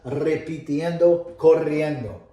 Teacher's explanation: And you trill the R's, right? Because it's a double R, not a single R. And you only do it in the very beginning.